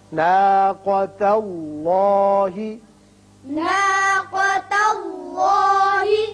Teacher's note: رسول اللہ، ناقۃ اللہ، ناقۃ اللہ، ناقہ نہیں پڑھیں گے، ناقہ، قاف کو پر پڑھتے ہیں۔ اسی طرح اس میں اللہ میں لام پر ہوگا کیونکہ پہلے زبر ہے۔